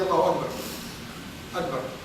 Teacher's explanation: So instead of ka, it is like ga. Between ga and ka. This is an allophonic variation of ka.